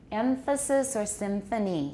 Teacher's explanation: Or we may also have another kind of funny nasal that's allophonic. Labiodental, for example, in a word like emphasis or symphony.